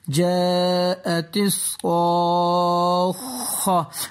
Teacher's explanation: الف کے اوپر بری ماد ہے، اس کو ہم 4-5 سیکنڈ کے لیے کھینچ کے پڑھیں گے